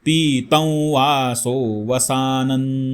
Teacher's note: ध्याये दाजा नुबाहुन धृतशरधनुषं बद्धपद्मासनस्थं पीतं वासो वसानन. पीत त वरती अनुस्वार आहे, अनुस्वाराच्या समोर व हे अक्षर आहे, त्यामुळे अनुनासिक व